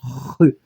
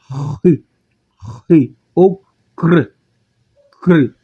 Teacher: Ri em grego, Ri em português, que vai representar o nosso CH. Então, observe como eu estou pronunciando Ri, ó, Ri, como uma gutural